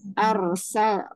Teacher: Alaikum kama arsalna kama mad bertemu dengan hamzah mad jaiz dibaca 4 atau 5 harokat. Arsal ro sukun dibaca tafhim karena sebelumnya berharokat fathah